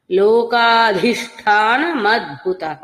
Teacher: అద్భుతఃలో భకారం కూడా మహాప్రాణం